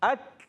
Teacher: اکمام میں حمزہ کو کاف سے ملانا ہے. اک آواز آئے گی.